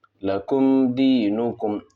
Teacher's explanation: اب یہاں میم ساکن ہے، با اور میم کے علاوہ دال ہے، تو یہاں پر جو میم ہے ظاہر کر کے پڑھیں گے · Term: اظہار شفوی